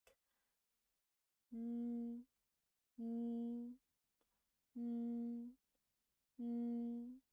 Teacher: Well, the tip of your tongue against the gum of your upper teeth, like this. Okay, the soft palate droops, the vocal cord vibrate, and the airflow is sent out from your nasal cavity like. You can also pinch your nose to check accurately.